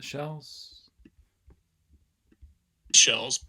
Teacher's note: what i'm producing there is a velarized l